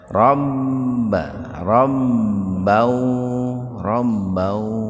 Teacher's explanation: Rbau idgam binguna. fathatain ketemu wau terpisah. Jadi dimasukkan ya diidgamkan ke wau dengan mendengung.